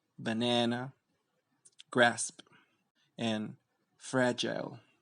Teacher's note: The tongue goes more to the front and the jaw opens a bit more than with the schwa.